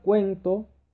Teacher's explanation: cuento es un diptongo porque es la unión de una vocal débil con una vocal abierta